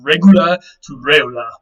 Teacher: the consonant G between the two vowels weakened and then ultimately dropped out